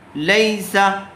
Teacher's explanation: یا ساکن سے پہلے اگر زبر ہو تو وہاں لین کا قاعدہ ہوگا اور اس کو جلد اور نرم آواز سے ادا کریں گے۔ یا کے اوپر جزم آیا ہوا ہے، اس لیے یا کو لام سے ملا کر پڑھیں گے۔